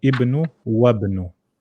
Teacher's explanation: Hamzatul Wasl, you don't pronounce it